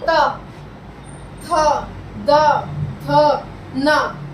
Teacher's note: इसमें हमारी जीभ जो है वो हमारे दांतों को टच कर रही है, हमारे दांतों को स्पर्श कर रही है